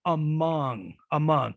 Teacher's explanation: the second sound is the wedge the first one is the schwa because a schwa occurs in unstressed syllables in the vowel chart